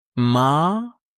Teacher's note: Tone two rising like asking a question. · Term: Tone 2